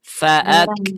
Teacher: huruf kaf ini dia termasuk huruf yang mengalir nafasnya.